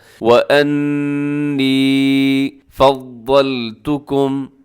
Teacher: یہاں نون مشدد پہ غنہ کیجیے گا، تھوڑا سا لمبا کرنا